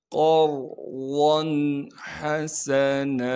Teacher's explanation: وَأَقْرِضُوا اللَّهَ قَرْضًا حَسَنًا، قاف کو موٹا کر کے پڑھیں گے اور قاف کو آگے را ساکن سے ملا دیں گے۔ را ساکن سے پہلے زبر ہونے کی وجہ سے را کو موٹا کر کے پڑھیں گے۔